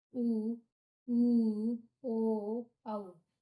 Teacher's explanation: ओष्ठ गोल हो जाएंगे इनका उच्चारण करते समय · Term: वृत्ताकार स्वर